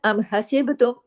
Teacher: ام حسبتم، ام جماؤ کے ساتھ، ام حسبتم، با پہ کلکلا ہوگا، حسبتم، با پہ کلکلا اس لیے ہوگا کہ با جزم کے ساتھ ہے